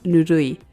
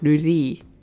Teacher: really likes to slur his vowels together a bit